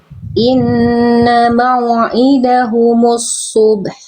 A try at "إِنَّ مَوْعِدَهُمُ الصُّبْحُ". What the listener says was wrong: Ainnya kurang duduk makhrajnya, ya. Inna mau'i. Nah, tekan lagi, kurang duduk di makhrajnya si ainnya, tengah tenggorokannya.